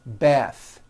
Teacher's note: The word bath is a noun with an unvoiced TH.